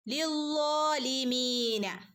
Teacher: അപ്പൊ എന്ത് ചെയ്യണം, ലോയിനെ ഒന്ന് കനപ്പിച്ചു കൊടുക്കുക കേട്ടോ. മാത്രമല്ല ലോയിന്റെ കൂടെ അലിഫ് മദ് വന്നിട്ടുണ്ട്, അപ്പോൾ 2 അനക്കം നീട്ടുകയും വേണം.